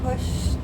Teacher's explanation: We have that t sound and we don't feel a vibration with a sh